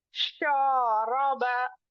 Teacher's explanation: यहाँ पर रॉ के ऊपर जबर है तो इसको मोटा पढ़ेंगे। शा के साथ अलीफ आया हुआ है और उसके ऊपर जबर है तो ये अलीफ मद्दा हुआ।